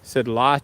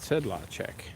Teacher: a little bit of emphasis on the first syllable but mostly evenly pronounced